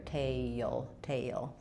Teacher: I have this little Y sound connecting